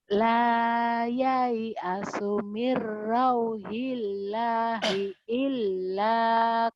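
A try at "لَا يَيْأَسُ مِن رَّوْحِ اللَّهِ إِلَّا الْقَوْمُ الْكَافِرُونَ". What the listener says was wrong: Salah. Lanya pendek. Ini kan matobi'i jadi pendek. Karena ketemu alif lam komariah. Ilal. Jadi pendek.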